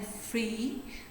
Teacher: These are voiceless because there is no vibration in your vocal cords while these are being pronounced. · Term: voiceless sounds